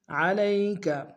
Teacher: علی میں لام کو یا کے سامنے آئیں گے، یا لین بغیر کھینچے پڑھیں گے